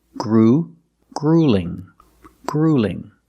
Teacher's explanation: The first vowel is the long oo like food and boot.